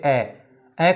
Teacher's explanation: ए को बोलते हैं तो जीभ के बीच के भाग पर दबाव पड़ता है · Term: मध्य स्वर